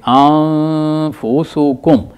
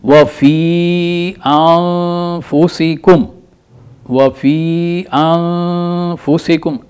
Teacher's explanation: یہ جو زبان ہے یہ تھوڑا سا اوپر لگے گی، آپ کے اوپر دانتوں کے اندر جو مسوڑے ہیں ان کے ساتھ ٹچ کرے گی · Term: غنہ